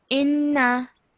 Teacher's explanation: you're holding the nasal sound, but when you're letting it go, you're only letting it go for 1 second.